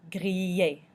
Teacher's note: you can hear the I, which makes the E noise, and then the two L's make a little Y noise